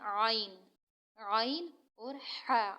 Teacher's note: یعنی حلق کا درمیانی حصہ جو ہوتا ہے، بیچ کا حصہ جو ہوتا ہے، اس سے ہمارے 2 حروف ادا ہوتے ہیں، عین اور حا۔